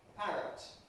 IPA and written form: ˈpærət (parrot)